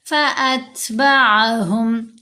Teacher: فأتبعهم تا ساکن ہے، یہاں ہم نے ہمس کا اظہار کرنا ہے۔